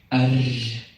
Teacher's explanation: the Norwegian R can be said continuously